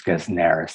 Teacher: And that consonant, that S is voiced, it loses its unvoiced quality because it's next to a sibilant, and it becomes Gesnerus. The accent is on the antepenult